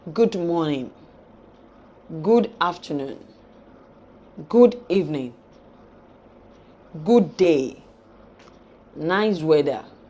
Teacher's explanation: The tune we assign to our greetings determine the reactions we get from the people they are meant for. For warm greetings, always use a high fall tune. The tone will fall, but it will be high.